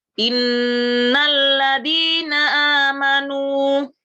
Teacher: kalau mim mati dan Nun ditasdid maka jelas mendengung gitu ya gitu bacaannya dengung dia tiga ketuk juga